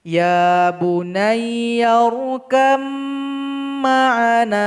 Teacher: Jadi ba ini kita tinggalkan saja karena di sini ada idgham mutajanisain. Jadi huruf ba ini sama huruf mim memiliki makhraj yang sama namun sifatnya berbeda. Jadi ba ini enggak dibaca.